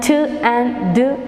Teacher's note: consonant sounds in which the air is blocked inside the mouth and then releases suddenly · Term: alviola plosives